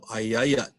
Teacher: marks represent stress stress marks so on we hear the word you hear where the sound picks up the sound goes up on the second a